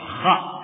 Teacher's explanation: bukan ko tapi Kha ya biarkan lepas dan bukan huruf syafatain bibir tidak boleh bergerak ra ya karena